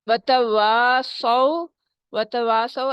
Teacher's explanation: کھڑی زبر بھی ہے وہاں ٹو کاؤنٹ اسٹریچ کرنا ہے. وتواصوا، وتواصوا الف مد ہو رہی ہے اور اس کے بعد صاد ہے بہت موٹا اونچا اور واؤلین ہو رہی ہے.